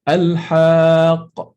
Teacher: So when you read al-haq, you are going to, the immediate sound after al-ha is a qaf with sukun, followed by a qaf with fatha, like this.